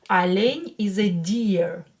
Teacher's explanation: Ударение на букву Е. So O will be pronounced as A because it's not stressed.